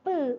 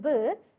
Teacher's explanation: If you are producing the sound P by touching your Adam's apple, you cannot feel any kind of vibration. So P is voiceless. But B while producing the sound B, if you are touching at your Adam's apple, you can feel the vibration. So B is voiced.